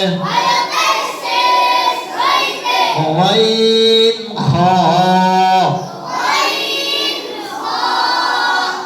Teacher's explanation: 3 নম্বর মাখরাজ হলকের শেষ হইতে গাইন খা।